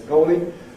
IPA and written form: ˈgɒoli (goalie)